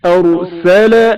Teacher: رائے ساکن سے پہلے زبر ہے جس کی وجہ سے را کو تفخیم کے ساتھ پڑھا گیا ہے۔